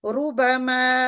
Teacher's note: र यानी जो बगैर तद के भी हो मसलन रु बमा तो र इसके ऊपर दमा है तो यह र भी मोटी अदा होगी · تو را اس کے اوپر دمہ ہے تو یہ را بھی موٹی ادا ہوگی۔ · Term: دمہ والی را